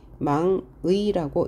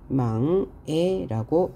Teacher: 조사의 의는 의라고 발음하는 게 원칙이지만 애라고 발음함도 허용한다.